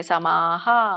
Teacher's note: ವಿಸರ್ಗ ಕೂಡ ಆ ಸ್ವರ ಬರುತ್ತೆ ಅಂದ್ರೆ ಹಕಾರ ಬರುತ್ತೆ